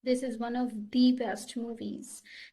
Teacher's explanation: जब हम एम्फेसिस करते हैं तो भी हम दी प्रोनाउंस करते हैं, भले ही आगे नाउन जो है, जो भी आगे वर्ड है, वो हमारा कॉन्सोनेंट से स्टार्ट हो रहा।